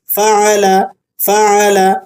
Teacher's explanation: فعل، فعل فا پر فتحہ ہے، عین پر بھی فتحہ ہے، عین کو آپ نے حلق سے صاف آواز کے ساتھ پڑھنا ہے۔ لام پر فتحہ ہے، ہلکی آواز سے آپ نے اس کو پڑھنا ہے۔